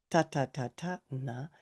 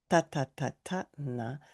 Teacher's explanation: So it's actually, you're actually kind of trapping your tongue there. And then when you say ta ta ta ta na, the tip of the tongue should touch the back of the teeth